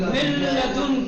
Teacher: ادغام ہوگا، یعنی نون ساکنہ کو حذف کر دیا جائے گا اور لام کو تشدید کے ساتھ پڑھا جائے گا